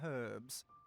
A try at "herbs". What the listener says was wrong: It's herbs! The H is silent.